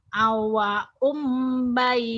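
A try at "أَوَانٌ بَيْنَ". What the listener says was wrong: Awanum itu kan nun, bukan awaum. Kan nun, awanum. Awanum bain.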